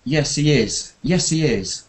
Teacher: when you agree keep it quite flat